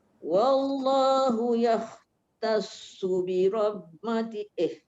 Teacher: Ya tu nipis tapi kha tu tebal.